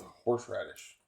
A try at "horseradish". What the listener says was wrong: You said it differently. So you said horseradish. There's no W.